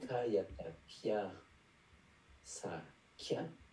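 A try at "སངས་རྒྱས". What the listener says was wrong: Gie, faut pas oublier le ra. Ra, kata, ga, yata, gia, sa, gie. Gie, gie, hein, c'est gia, sa, gie, gie, c'est sangue.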